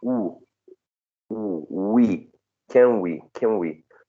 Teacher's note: So there's some sort of regressive assimilation. The n might be a little bit labialized. There's some sort of bilabial feature affecting the n, but also, as I said before, it depends on the speaker and the way the speaker says this.